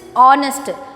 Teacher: honest h is not pronounced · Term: h is silent